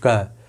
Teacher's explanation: तो जब आप बोलते समय आपकी कम प्राणवायु निकले, जैसे आपने बोला भैया क, आप क बोल करके देख लीजिए, आप क बोल करके देखिए। आप जब क बोलेंगे तो आप जो है प्राणवायु आपकी कम निकलेगी। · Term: अल्प प्राण